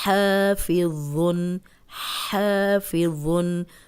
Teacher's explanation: اوپر سامنے والے 2 دانت جو ہیں ان کے کنارے پہ زبان رکھیں اور بولیں تو سیٹی کی آواز نہیں آئے گی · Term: ذو